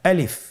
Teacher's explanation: আমি যখন আলিফ বলছি এর মধ্যে কোন টান হবে না